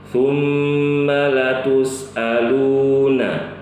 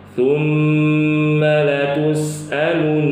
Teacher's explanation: Membaca panjang huruf lam yang kedua yaitu la tus'alu. Lu-nya itu ya. Lu-nya dipanjangkan.